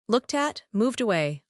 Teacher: The ed ending actually jumps to the next word. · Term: linking